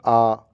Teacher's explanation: जब आ बोलेंगे तो आ में हमारा पूरा मुंह खुला रहता है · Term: विवत स्वर